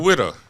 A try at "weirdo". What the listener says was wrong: A widow. Whoa, a what? A widow. You sound like I know you're saying weirdo, but it sounds like you're saying his wife dead. That's what you sounded like.